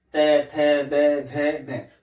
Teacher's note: जब उसका हम उच्चारण करते हैं तो हमारी जीभ कहां टकराती है, दांत के टकराती है।